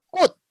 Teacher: even though it has a CH final consonant, it's actually sounds of D. So, 꽃. Can you read this part first?